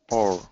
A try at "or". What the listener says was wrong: More O. O, and let's do a diphthong. O.